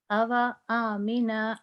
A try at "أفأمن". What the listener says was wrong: نہیں اگین آپ ٹرائی کرو الف نہیں لمبا ہونا چاہیے اوا امینا